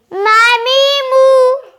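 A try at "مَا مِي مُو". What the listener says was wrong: मुंह खोल के मामीमू अलग तो ठीक पढ़ते हो लेकिन रवा में आवाज नाक में जाती है मामीमू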